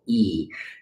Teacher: So like the letter E, you go E. And when you make an E sound, you should notice that your tongue is kind of balled up and back up in the roof of your mouth